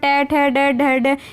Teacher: पूरे जो है आपके मूर्धन्य से बोले जाते हैं